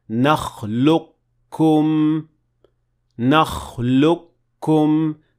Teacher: The qaf is not pronounced at all. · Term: idgham